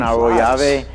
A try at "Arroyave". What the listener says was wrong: roll the R. Arroyave. That's the Spanish flavor.